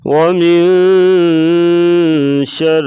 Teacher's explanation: واو کو پڑھتے وقت ہونٹ گول کریں گے، پھر واو کی صحیح طریقے سے ادائیگی ہوگی۔